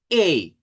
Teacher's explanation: La vocal A del inglés es un sonido largo, pero también la vamos a definir como un diphthong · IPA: /eɪ/